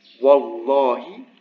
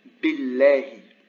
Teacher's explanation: if the name Allah is preceded by a kasra, then the lam is not emphatic